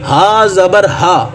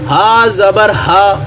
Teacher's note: جب بھی ہا ادا ہوگا آپ کے جو گلے کا سب سے نچلے والا حصہ ہے وہاں پہ وائبریشن ہوگی، وہاں پہ ارتھ پیدا ہو جائے گی، ٹھیک ہے، وہ ہلنا شروع ہو جائے گا۔